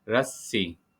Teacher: सीन पे मुशद्दद है तो सीन की आवाज़ 2 दफ़ा आएगी